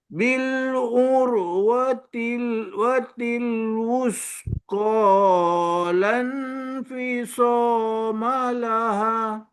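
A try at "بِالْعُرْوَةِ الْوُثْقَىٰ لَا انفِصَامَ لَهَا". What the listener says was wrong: Ha panjang sikit. Ha dua harakat lah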